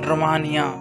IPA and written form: roʊˈmeɪni.ə (Romania)